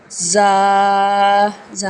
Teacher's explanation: زا میں سیٹی کی آواز آئے گی، زبان کی نوک دونوں دانتوں کے درمیانی کنارے سے ادا ہوگا۔